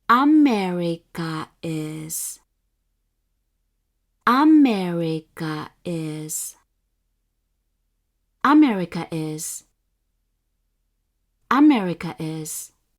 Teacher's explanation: the pitch of the words first mora is high and the pitch of all remaining mora including the particle are low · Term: head high pattern